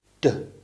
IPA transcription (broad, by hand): d